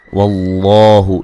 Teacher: लफ्ज़ अल्लाह को मोटा अदा करेंगे